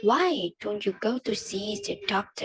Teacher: the pitch goes up at the beginning and gradually down at the end.